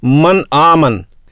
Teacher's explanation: زبان کی نوک کو اوپر کے دانتوں کی جڑ سے لگایا جائے اور نون کی آواز کو اس کے مخرج سے صاف نکالا جائے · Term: اظہار